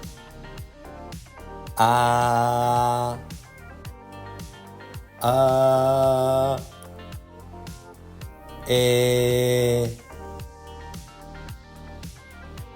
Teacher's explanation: És un so que fem obrint la boca de manera mitjana, no tan oberta com el so /a/ ni tan tancada com el so /e/. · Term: vocal neutra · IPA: [ə]